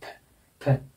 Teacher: इसमें दोनों होंठ बंद नहीं होते हैं, ऊपर के दांत नीचे के होंठ से टच करते हैं।